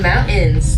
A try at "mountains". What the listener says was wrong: There's not like an apostrophe there.